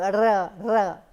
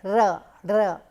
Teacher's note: The tip of the tongue actually hits the position behind the teeth ridge, and so it actually bangs repeatedly. So, it is not only one hit, it continues the process, but it is very fast, and then we produce that trilling effect